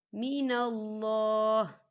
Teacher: تو یہاں پر اللہ کے نام کو ہم موٹا پڑھیں گے